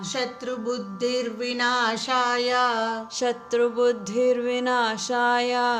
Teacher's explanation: ಇಲ್ಲಿ ವಿಸರ್ಗ ಇರೋ ಕಡೆ ಸಂಧಿಯಿಂದ ಅರ್ಕಾವತ್ತು ಬಂದಿದೆ.